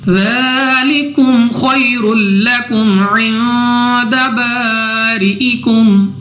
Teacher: نون ساکن کے بعد دال حروف اخفا میں سے ہے، غنہ کر کے پڑھا جائے گا. الف سے پہلے زبر الف مدہ 2 سیکنڈ تک کھینچ کر پڑھیں گے. · خا مستعلیہ میں سے ہے، موٹا پڑھیں گے. یا ساکن سے پہلے زبر، یا لین بغیر کھینچے بغیر جھٹکا دیے پڑھیں گے. 2 پیش کی تنوین کے بعد ہمارے پاس لام حروف یرملون میں سے ہے، ادغام کا قاعدہ ہے، مگر غنہ نہیں کریں گے کیونکہ حروف یرملون میں جو را اور لام ہے ان دونوں میں غنہ نہیں ہوتا. · را کے نیچے پھر زیر تو را کو ہم باریک پڑھیں گے.